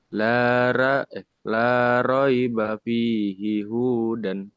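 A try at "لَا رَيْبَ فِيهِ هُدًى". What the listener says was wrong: Kenapa panjang hunya? Ada yang panjangin nggak? Nggak ada. Jangan dipanjangin ya.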